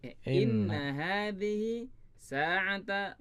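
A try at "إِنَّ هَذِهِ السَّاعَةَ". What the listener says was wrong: Inna hadhis ya, sambung ya. Ya, kemudian ditambahkan inna menjadi inna hadhis sa'ata.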